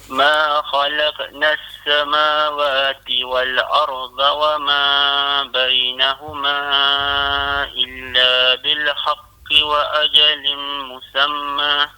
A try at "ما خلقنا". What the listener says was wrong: Ma kha. Ma khalaq. Ma kha tu kena kalau ma khalaq kha tu kena tebal sikit. Ma khalaqna as-samawati. kha makhraj huruf kha ya ma khalaqna as-sama Dan juga makhraj pada huruf dhad. Wal arda Dha ni dia kena tebal. Kalau wal arda tu dia jadi wal arda tu dia kurang tebal. Dia kena tebal dan sengit mulut sikit.